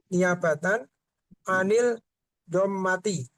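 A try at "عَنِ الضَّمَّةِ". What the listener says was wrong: anid domati. Huruf dot ini kan huruf syamsiah. Jadi langsung masuk seperti melesap alif lamnya. Anid dommati gitu ya.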